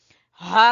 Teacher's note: गले के आखिरी हिस्से से सीने से